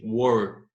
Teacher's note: Repare que o k não tem vibração. Já o wor tem.